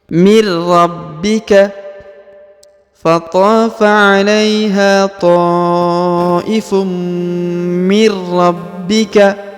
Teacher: huruf ba berharakat i di atasnya terdapat tanda tasdid atau penekanan maka dia ditahan dan ditekan dua harakat